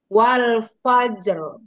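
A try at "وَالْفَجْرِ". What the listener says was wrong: Jimnya jangan seperti ada tasydid. Wal fajr. Jangan. Wal fajr. Fajr. Ini qalqalah sughra. Wal fajr. Wal fajr.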